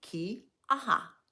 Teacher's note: the Hawaiian letter ʻokina, and it indicates a glottal stop of air